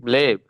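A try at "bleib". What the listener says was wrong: ব্লাইব, ব্লেব না, ব্লাইব। আ I বি L, এরপর আই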